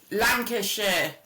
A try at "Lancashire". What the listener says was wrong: Lancashire. We don't say shires, we say sheer.